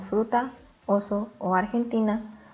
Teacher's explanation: aunque no poseen acento ortográfico tiene una sílaba tónica en el penúltimo lugar